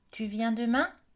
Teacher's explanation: vous entendez que ça monte à la fin. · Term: L'intonation ascendante